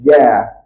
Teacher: Makhraj jim yang tepat guna tengah lidah, kena langit-langit ja. Ini baru angin tak ada.